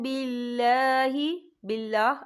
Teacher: अल्लाह का नाम बारीक पढ़ा जाएगा, अल्लाह के नाम से पहले ज़ेर है